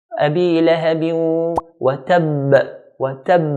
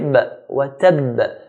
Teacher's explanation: hold it and then make a knocking sound, bouncing sound, because ba is one of the letters of qalqalah